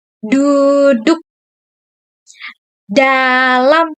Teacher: Lalu pada huruf konsonan D, bunyi D, contoh katanya duduk dan dalam, yaitu bunyi letupan lidah ke langit-langit depan